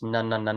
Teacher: the tip of your tongue touching what's called essentially the alveolar ridge